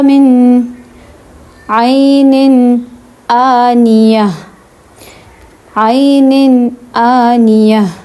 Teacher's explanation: اب عین نن میں عین ہے، عین حروف حلقی میں سے ہے تو ہم اس کو ظاہر کریں گے، اس کو ہم من پڑھیں گے